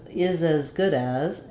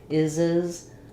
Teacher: But in many fluent speaking opportunities, when we say as, we use more of an vowel or even almost a schwa vowel. It's not a clear vowel. It's very reduced.